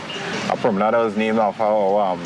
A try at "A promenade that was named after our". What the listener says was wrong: you know, sometimes I don't understand your accent. Sometimes you join the words.